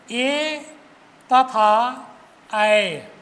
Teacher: एक है ए द कंठ तालु इसमें दो वर्ण एक ए तथा ऐ ये दो ऐसे स्वर वर्ण है जिनका उच्चारण दो स्थान से कंठ और तालु यानी दोनों को मिला दें तब इन वर्णों का उच्चारण होता है। इस प्रकार ए एवं ऐ का उच्चारण स्थान कंठ तथा तालु है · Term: संयुक्त स्वर